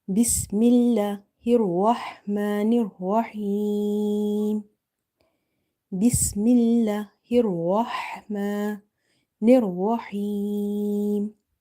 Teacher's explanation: you have to say this ha from the middle of the throat.